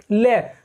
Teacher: निकालें तो इसका अर्थ यही होता है पार्श्विक का पास, यानी जब हम इसका उच्चारण करते हैं ले का, ले, तो हमारी जीभ की साइड से यानी जीभ के पास से वायु निकलकर बाहर आती है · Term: पार्श्विक व्यंजन